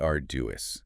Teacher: Arduous. Stress on the first syllable, 3 syllables total.